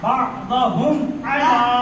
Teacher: میم ساکن کے بعد عین آیا ہے. میم کی آواز کو ظاہر کر کے پڑھیں گے. اظہار شفوی ہوگا.